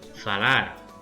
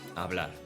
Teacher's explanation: A lot of Western Romance languages, including Asturian, often have an F, where it's a silent H in Spanish.